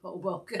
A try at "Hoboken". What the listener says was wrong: You need to actually pronounce this, put the accent on the second syllable, and you've got it.